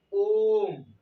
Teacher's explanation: ह्रस्व और दीर्घ को मिला के उसका दुगुना समय लगेगा इसमें बोलने में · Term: प्लुप्त स्वर